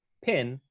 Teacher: The P in pin is aspirated.